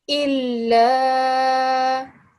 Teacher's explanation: Shadda, perfect. So because of the shadda, we put more pressure and emphasis on the lam